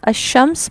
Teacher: لام لکھنے میں ہوتا ہے لیکن پڑھنے میں نہیں آتا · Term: ادغام شمسی